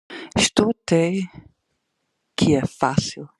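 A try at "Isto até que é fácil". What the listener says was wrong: But you should have pronounced the A in até here. I know we skip it a lot, but it happens in the expression até já or até logo. Até já, até logo.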